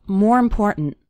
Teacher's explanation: The word more kind of runs into the word important, and the last syllable of important kind of gets reduced.